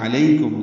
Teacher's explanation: عین وسط حلق سے ادا ہوگا